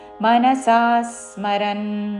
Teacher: మనసా సా దీర్ఘము దాని మీద ఆఘాత పక్కనున్న సంయుక్త అక్షరంలోని సా ద్విత్వం చేస్తూ మనసా స్మరన్ య ఆస్తే మనసా